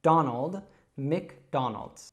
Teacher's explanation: Donald's is actually quite difficult because it's got that dark L sound